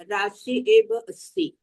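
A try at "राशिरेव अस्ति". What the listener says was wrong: Rashi Eva no. Rashi Reva. Rashi Reva Asti. Why that Repa is very important. Actually, Rashihi Eva, Rashi Reva. Visargasya Repaha. That is the Visarga Sandhi there. Rashihi Eva. We break it up as Rashihi Eva.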